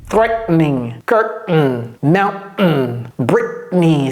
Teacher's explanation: C'est-à-dire, vous arrêtez sur le T et c'est comme si vous cognez sur le T. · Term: stop T